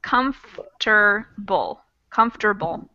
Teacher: even though they're written with more syllables, comfortable, we cut out one of the syllables.